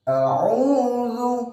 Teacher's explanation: Harusnya a'udzu, hamzah dulu, kemudian kita rubah ke makhraj berikutnya, yakni huruf ain.